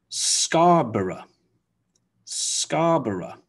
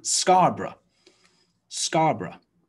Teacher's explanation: ending of the word g b-o-r-o-u-g-h it's not borrow or borrow it's often just reduced really simply down to one syllable of bruh